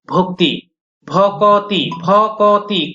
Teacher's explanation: এখানে আমরা একটা আলাদাভাবে স্বরধ্বনি উচ্চারণ করছি, এটাকেও বলা হবে মধ্য স্বরাগম